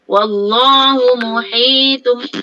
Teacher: Asalnya tun, tanwin tun sebenarnya diganti dengan mim, kita tukarkan masuk kepada itu kan, menukarkan iklab tu, menukarkan sebutan kepada mim. Daripada muhitun kepada muhitum, rapat je mulut, jadilah mim.